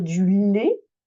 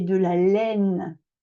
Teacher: on va dire du lait on ferme et de la laine parce qu'il y a le N phonétique donc on ouvre